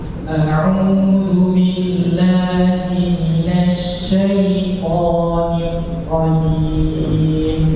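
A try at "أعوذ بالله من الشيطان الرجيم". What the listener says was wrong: Jangan putus ra. Nirrajim.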